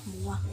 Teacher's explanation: M arupa kontoid nasal, bilabial dan bersuara. Pengucapan bunyi ini dengan menutup arus udara dan paru-paru pada rongga mulut dan mengeluarkannya lewat rongga hidung.